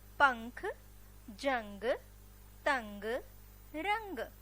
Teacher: इन सारे शब्दों के उच्चारण करने से हमारे नाक से ध्वनि निकल रही है · अनुस्वार का जब हम उच्चारण करते हैं तो हमारे नाक से ध्वनि निकलती है